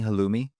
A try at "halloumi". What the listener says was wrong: Halloumi. You give it a little pause in between.